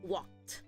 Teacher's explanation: the k sound is a uh voiceless consonant so that being said the Ed is going to sound like a t